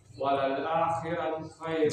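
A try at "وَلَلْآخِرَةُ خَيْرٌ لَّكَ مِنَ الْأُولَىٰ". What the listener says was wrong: Jangan ro. Walal akhirah. Tebal ro. laka minal ula.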